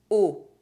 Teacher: The lips are rounded and the mouth opening is very small. It looks like you're trying to kiss someone or blow a candle. The tongue is backwards and do not touch the lower teeth. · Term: closed O sound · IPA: [o]